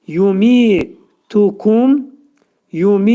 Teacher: Yə hərfi təbii mədli hərflər qrupuna aiddir. Və burada mi mi iki səs qədər uzanacaq, çünki y hərfinə görə